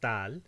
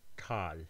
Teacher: this word is tal with an alveolar t and this word is ʈal with a retroflex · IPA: taːl ʈaːl